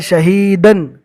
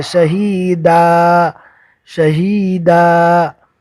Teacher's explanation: दो ज़बर की तनवीन रुकने की हालत में अलिफ मद्दा से बदल जाएगी।